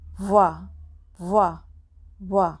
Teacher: तो दांत और ओष्ठ दोनों जगह से ही वकार का उच्चारण होता है, इसलिए वकार का उच्चारण स्थान दंतोष्ठ दोनों है।